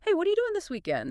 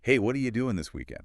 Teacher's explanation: What are you becomes that wa sound and doing often becomes doing. That final G sound gets dropped which is really common in informal speech